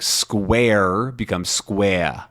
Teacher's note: There's also a couple of other just different pronunciation with R words because the Boston accent is non-rhotic typically, which means that they don't have the sound in R words